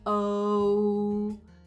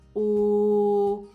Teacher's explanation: goat vowel shifts from a diphthong in my accent, O, to a monophthong in the Scots accent, O. It's really easy to see me shift between the two vowels in the American goat by watching my lip rounding, O, versus the static lip rounding in the Scottish goat, right?